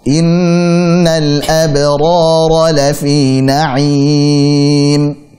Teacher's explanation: Pada surah pada ayat innal abrara lafi na'im, seperti biasa innal gunnah panjangkan, innal abrara qalqalah surah dan tipiskan, abrara ada dua ra di sini, ra tebalkan, jangan sampai ru, jangan sampai vokalnya ru salah, tapi ra innal abrara lafi na'im.